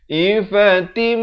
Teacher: Ifatim di sini idgham bi gunnah. Daripada tin jadi tim 2 harakat.